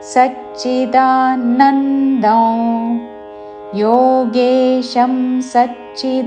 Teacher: దా తర్వాత అనుస్వారము నాసిక వ ఉచ్చారణ